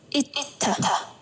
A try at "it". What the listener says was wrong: Nhẹ đi một tí, it.